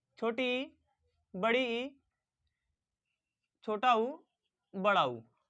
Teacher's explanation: ऐसे स्वर वर्ण जिनका उच्चारण करते समय मुख लगभग बंद हो, उन्हें समृत कहते हैं